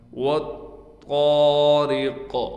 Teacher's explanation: واو کو ہم اس طا سے ملا دیں گے